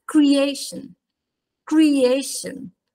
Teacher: Quella A è molto più lunga della lo che noi pronunciamo in italiano ed estremamente più lunga soprattutto in rapporto, in proporzione rispetto all'ultima sillaba che è sostanzialmente una sillaba accennata.